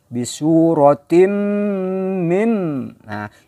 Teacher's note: jadi bunyinya m ya Ada dengungnya ada guna ya bisu rotine minha ini juga tidak dibaca mint bukan bunyinya minta